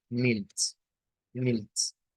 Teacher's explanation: Realmente aquí lo que sucede es que la TS, cuando usted la junta, le lleva al africado, al ts, Milt, que es más rápido que estas dos.